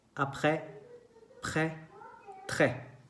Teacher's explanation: En este caso siempre es un acento grave, entonces con la boca abierta.